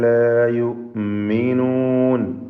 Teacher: ഹംസ ഷിദ്ദത്തിൽ നൽകി ഉച്ചരിക്കണം. യൂമിനൂൻ എന്നായി പോകരുത്.